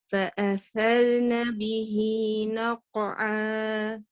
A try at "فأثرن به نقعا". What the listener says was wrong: Your tha and the qalqala was perfect and ahsanti, but your ra, the ra sukoon here, will it heavy mouth or light mouth? Because of the zabar before it. فَأَثَرْنَ, lift up your tongue for the ra.